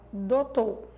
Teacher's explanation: ele suprime o fonema semivocálico do ditongo ou, da primeira sílaba, dou, e suprime o fonema final R da palavra doutor, ficando essa pronúncia aí. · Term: monotongação